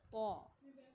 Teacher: اس طریقے سے دونوں کا مخرج سیم ہی ہے، بس فرق تھوڑا سا یہ ہے کہ یہ دونوں باریک پڑے جاتے ہیں اور یہ طا لاسٹ والا جو ہے وہ ہمارا پڑھا جاتا ہے موٹا۔ طا یعنی آواز کی منہ بھر کر موٹا کر کے ادا کیا جاتا ہے